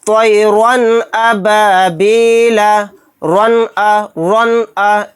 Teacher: را 2 زبر رن کو ہم جلدی پڑھیں گے، اس کے اندر غنہ نہیں کریں گے، یعنی را 2 زبر رن کو ظاہر کر کے پڑھیں گے۔ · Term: اظہار